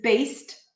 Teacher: the ED suffix is often pronounced as a T when it appears after a voiceless consonant, like here, after the S, based.